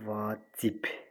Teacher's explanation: son samiti tələffüs zamanı karlaşır